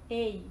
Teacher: O e no caso é a vogal e o i no caso a semivogal. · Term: ditongo